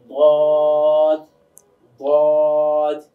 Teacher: জিহ্বার কিনারাটা এটা উপরের মাড়ি দাঁতের সঙ্গে লাগাতে হয়। তো জিহ্বাটা স্বাভাবিক থাকবে, জিহ্বার গোড়াটা গিয়ে মাড়ির দাঁতের সঙ্গে গিয়ে লাগবে। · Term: দদ